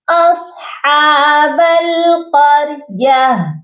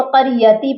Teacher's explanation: ہم ہا کو سائلنٹ کرتے ہیں، ہا کی آواز پر آ کر رکتے ہیں، یعنی ہا کو ساکن کرتے ہیں